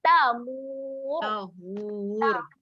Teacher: huruf ra ketika di hujung, ra yang tebal. Jadi kita kena muncungkan saja.